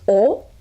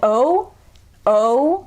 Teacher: o it's very pure it's just all so in this case the japanese vowel is actually kind of darker than the american english vowel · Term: japanese o